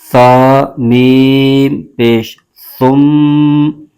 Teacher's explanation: سا کا مخرج یہ ہے زبان کا سرا اوپر کے دانتوں کے اندرونی کنارے سے